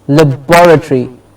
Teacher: Then we have in the words ending with turi, T-O-R-Y, the syllable before the syllable stress is turi, but be careful with the rule breakers. For example, laboratory, bor gets the stress.